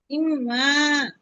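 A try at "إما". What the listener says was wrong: ইম, গুণনা করেন, অধিক গুণনা আপু। ইম, মা।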